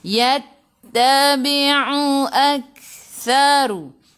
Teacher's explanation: Yattabi'u lagi sekali ain jaga-jaga sebut betul-betul ain baru sebut hamzah. Yattabi'u Kaf sifat hurufnya hamas kena ada sedikit sahaja angin, jangan banyak.